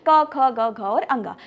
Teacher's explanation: क वर्ग के उच्चारण स्थान की बात करें जो कि कंठ से होती है, यानी कि क वर्ग में आने वाले सभी व्यंजन क, ख, ग, घ और अंगा।